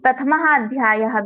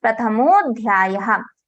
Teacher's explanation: Maha, ma plus a plus visarga. So we have a before the visarga, we have a after the visarga. Then visarga gets converted into O.